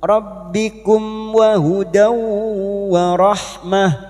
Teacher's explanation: fathah tanwin bertemu waw idgham bi gunnah masuk ke huruf waw dan mendengung selama 3 harakat